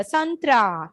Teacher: सा अंक के बाद था आया है, तो न साउंड आएगा